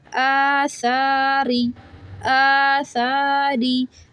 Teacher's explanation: تو حمزہ کھڑا زبر آ سا کھڑا زبر سا دونوں کو ایکول کھینچیں آ سا را زیر ری اس کو باریک پڑھیں گے زیر ہے